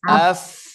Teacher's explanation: Bibir bawah bertemu dengan ujung gigi seri atas. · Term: huruf fa